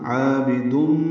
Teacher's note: الف مدہ ہے، 2 حلقات لمبا ہے، عین وسط حلق سے ادا کریں گے، با کو جلدی پڑھیں گے. تنوین کے بعد میم آنے کی وجہ سے ادغام ہے، ادغام ناقص مع الغنہ. عابدم، ما میں الف مدہ ہے، 2 حلقات لمبا ہے.